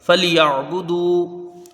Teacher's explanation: باقی اوپر پیش ہے، اس کو جلدی پڑھائے گا، دال وا پیش دو۔ یہاں واو مدہ ہے، اس کو ایک الف کے برابر کھینچ کے پڑھیں گے